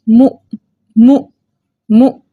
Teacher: ساکن حمزہ کی آواز اس کے مخرج میں جھٹکے کے ساتھ رکتی ہے · ہم نے حمزہ کو اس کے مخرج میں ہلا کے پڑھنا ہے، جھٹکا دے کر پڑھنا ہے